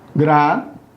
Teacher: Gratuito. Eu tenho ditongo aqui, não tenho hiato. Né? De qualquer maneira, a sílaba tônica é a penúltima.